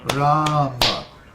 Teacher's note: Ram has a long A, and Ma has a short A.